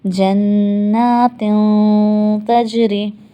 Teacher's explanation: کچھ ایسی آواز نکلی ناک میں سے، اگر آپ غور کریں تن نہیں نکلا بلکہ یہ نون ہماری ناک میں چلا گیا اور غنہ ہو گیا.